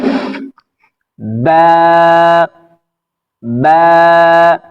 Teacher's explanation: ঠোঁট থেকে, তারপর একটু বাতাস বের হবে